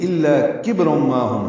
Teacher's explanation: الا میں لا الف مدہ ہے، 2 حرکات لمبا ہے. کبر میں کاف باریک ہے، با ساکن پہ قلقلہ ہے، را پر ہے کیونکہ اس پر 2 پیشیں ہیں.